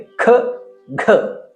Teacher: ಯಾವ ವ್ಯಂಜನಗಳನ್ನ ಹೆಚ್ಚು ಗಾಳಿಯ ಸಹಾಯದಿಂದ ಉಚ್ಚರಿಸುತ್ತೇವೆಯೋ ಅದನ್ನ ಮಹಾಪ್ರಾಣ ಎನ್ನುತ್ತೇವೆ